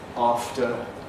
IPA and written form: ˈɑːftə (after)